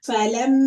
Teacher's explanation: This is a ghunna because meem has a shadda. Meem has a shadda, so I'm going to hold the sound in the nose for 2 counts.